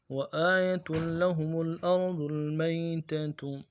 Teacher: وآیہ میں لفظ آیہ جو ہے حمزہ کے اوپر کھڑا ہے، کھڑا زبر ہے، اس کو ایک الف دال میں کھینچیں گے